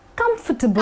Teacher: The correct pronunciation actually happens to be comfortable, which means come for table, where the A is actually subtle. You know, you don't give so much importance to the A.